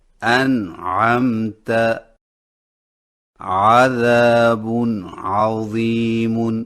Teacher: نون پر آواز نہ کٹے بلکہ چلتی رہے